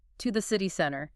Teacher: I start low and I finish high.